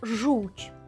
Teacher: воно дійсно звучить по-польськи так шиплячо твердо дещо в кінці вже м'ягко так тобто маємо оцю таку типово польську вимову Ну мені так